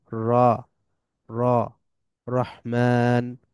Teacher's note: আবার র সরাসরি ও উচ্চারণ হবে না ও সাউন্ড হবে না